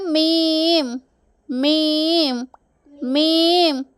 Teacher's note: രണ്ട് ചുണ്ടിൻ്റെയും ഉണങ്ങിയ ഭാഗത്തിലൂടെയാണ് മീം എന്ന അക്ഷരത്തെ പുറപ്പെടുവിക്കുന്നത്.